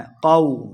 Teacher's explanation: قوم، قو، واو کے اوپر اپنے ہونٹ گول کریں گے، قو، قاف کو موٹا پڑھنا ہے۔ قو، لمبا بالکل نہیں کرنا۔